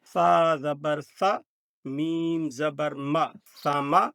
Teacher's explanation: اب اس میں خیال کرنا ہے کہ سین کے اوپر سیٹی کی آواز ہے، سین حروف صفیریہ ہے